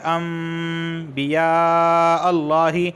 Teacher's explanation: لفظ اللہ سے پہلے یہاں پر زبر آیا ہے اس وجہ سے لفظ اللہ کو میں موٹا پڑھ رہا ہوں